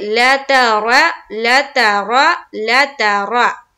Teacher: और अगर रा के नीचे जेर यानी कि कसरा आती तो हम यहाँ पर रा को हम क्या करते, बारीक करते। चूंकि यहाँ पर रा के ऊपर जबर है तो हम यहाँ पर मुंह भरकर पढ़ेंगे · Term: मोटा करके पढ़ेंगे